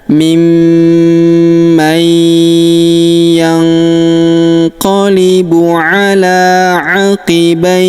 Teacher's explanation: Dan di sini terdapat tanda berhenti atau tanda waqaf yaitu waqaf qalah. Nah, huruf ya sukun juga di sini disebut dengan mad layyin ya. Panjang bacaannya 2, 4 atau 6 harokat.